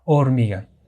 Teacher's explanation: la sílaba tónica es exactamente en la sílaba mi vale justamente ahí uno puede notar que la fuerza del sonido